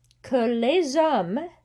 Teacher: les hommes, that's a liaison. So you hear the Z sound